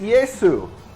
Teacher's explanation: they didn't have a sh in Greek, and they made it Yesu, which it still is in Italian.